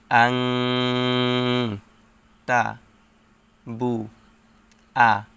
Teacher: হচ্ছে ইকফা গুন্না নুন সাকিনের পর ইকফার হরফ তা আসছে তাই গুন্নাহর সহিত গোপন করে পড়তে হবে